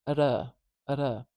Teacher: This little tap behind the teeth. It's very similar to the D, but it's shorter, and it can only appear in certain environments in an English word, especially North American English word.